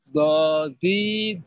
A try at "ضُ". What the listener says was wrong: Makrosnya udah benar tapi belum naikin lidah. Ya, belum naikin lidah. Jadinya dodi.